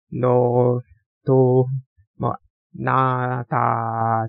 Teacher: 윗니랑 잇몸 그 중간에 혀를 두고 한국어 같은 경우에는 그 중간에 혀를 두고 발음을 합니다.